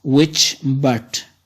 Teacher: Which is unstressed, but is stressed.